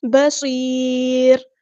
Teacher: با لائٹ باریک صاد ہیوی موٹا اور را باریک لائٹ